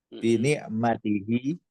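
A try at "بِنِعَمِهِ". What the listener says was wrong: ada tak di situ? Berarti apa bacanya? Kalau bini'mati harus ada tanya. Bini'amihi. Jamak ni'matun, ni'amun. Jadi kalau kita lihat, kalau tidak ada tanya berarti pakai jamak itu. Ni'amun.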